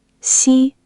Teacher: it's a flat, high first tone · high and level, like holding one note